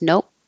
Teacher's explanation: you won't release the P. You just hold it with your lips closed.